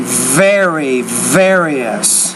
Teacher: you're not pronouncing that V with enough vibration